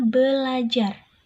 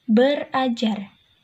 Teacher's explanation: Maka bunyi R yang pertama didisimilasikan atau diperbedakan menjadi huruf atau bunyi L